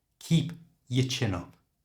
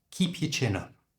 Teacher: The your becomes y. So the O-U-R is just swapped for the schwa sound.